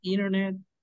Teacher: Internet, o sea, inner. Se elimina la T, internet.